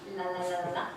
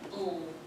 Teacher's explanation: So there's a difference, as you may know, between the light L and the dark L, and the difference is the positioning of the tongue. So a light L is at the front, la la la la, like lovely Lucy, but a dark L is at the back, ooh.